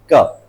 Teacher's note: Organ बंद होता है और पूरी तरह रिलीज होता है सडनली, तो ये वाली साउंड बनती है। क में ये जो हमारा सॉफ्ट पैलेट है वो चिपक रहा है पूरा